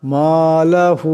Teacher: এখানে হার উপর মদ আছে, এটাকে বেশি লম্বা করিয়া পড়তে হবে